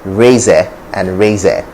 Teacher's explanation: pronounce the schwa as an air sound